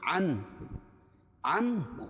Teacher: نون ساکن کے بعد یہاں اظہار حلقی ہوگا